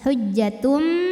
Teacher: Karena ada tanwin dhammah menghadapi huruf ba, maka bunyi tanwinnya yang n diganti jadi bunyi mim sukun jadi m. Hujjatum disertai bunyi dengung. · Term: iqlab